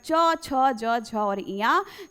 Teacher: च वर्ग का उच्चारण स्थान बेटा तालव्य या फिर तालु बोल सकते हैं।